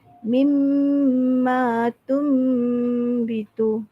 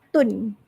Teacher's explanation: Tum ada dengung sikit. And then bila kita sebut tun tu, kita tak pergi tun. Kita pergi tum.